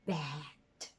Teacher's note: the lowest and the smiling vowel, very characteristic of American English, is bat. If you don't know how to smile, you cannot pronounce bat.